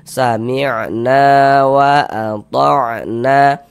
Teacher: Sehingganya na dibaca panjang. Mad thobi'i panjang dua harakat.